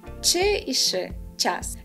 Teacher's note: У деяких говірках Слобожанщини шеплячі «ч» та «ш» звучать м'яко.